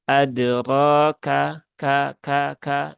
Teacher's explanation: kafnya tunaikan sifat hamsnya ya. Maka k dengan tipis saja, tidak perlu berlebihan